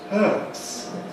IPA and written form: hɜːts (hurts)